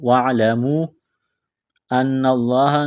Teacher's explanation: نون مشدد پر غنہ کریں گے، آواز ناک میں چھپائیں گے۔ لفظ اللہ کے نام سے پہلے زبر ہے، لفظ اللہ کے نام کو موٹا کرنا ہے، کاف کو باریک کرنا ہے، لام میں سختی کریں گے، دبائیں گے۔